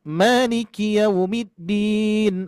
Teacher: Ingat, maliki yaumiddin tidak dipanjangkan ki-nya. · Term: panjang pendek